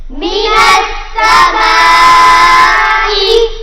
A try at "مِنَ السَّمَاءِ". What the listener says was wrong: بڑا مد ہے، کھینچ کے پڑھیں گے من السماء